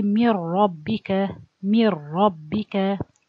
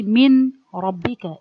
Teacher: The noun, when I look to this noon, it's merged to the ra completely. Nothing remains from the noon. · So you merge it, so no noon anymore. And no ghunna of the noon, nothing remain. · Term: idgham kamil